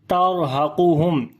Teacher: Ra we read in heavy sound because there is sukun sign on the ra and before there is fatha.